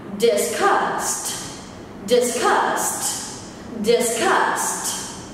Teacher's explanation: từ này được nhấn ở âm tiết số 2 nên ngữ điệu sẽ là lá